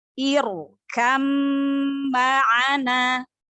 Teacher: Jadi ra sukun sebelumnya kasroh tidak asli karena sebab di sini karena sebab hamzah wasol. Maka ra sukunnya dibaca tafkhim, dibaca tebal.